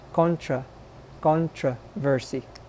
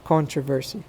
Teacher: you might hear that second o sounding like an a